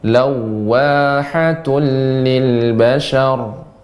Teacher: Ya, mengucapkan waw yang tasydid ditambah dengan monyong ya. Ketika kita mengucapkan waw terlebih tasydid, wawnya dimonyongkan.